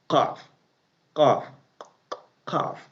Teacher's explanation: Qaf is coming out from, when your tongue is like hitting, when your tongue is connecting the upper portion of your jaw.